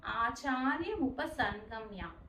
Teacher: ఆచార్య ఉపసంగమ్య లో ఆ సం ఆ సున్నా సౌండ్ ని ఎన్ సౌండ్ గా చదవాలి. · ఇక్కడ దుర్యోధన దుర్యోధనస్తదాలో ధ అనేది మహాప్రాణాక్షరం అండి, దాన్ని స్ట్రెస్ చేస్తూ చదవాలి. ఆచార్యం ఉపసంగమ్యలో ఆ సున్నా సౌండ్ని ఎన్ సౌండ్గా చదవాలి